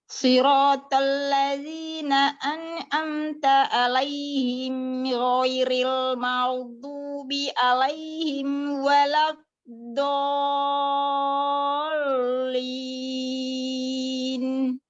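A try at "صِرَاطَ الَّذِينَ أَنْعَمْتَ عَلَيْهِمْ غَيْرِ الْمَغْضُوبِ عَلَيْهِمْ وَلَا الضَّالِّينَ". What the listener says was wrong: Nah, beberapa huruf ain di sini semuanya masih terdengar seperti hamzah. Siratal ladzina an'amta alaihim ghairil maghdubi alaihim waladdallin. Alaihim.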